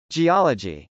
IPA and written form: dʒiˈɑlədʒi (geology)